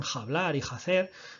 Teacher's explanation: esa F pasa a ser una H aspirada